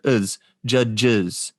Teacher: after the word judge, it appears as a schwa and a z together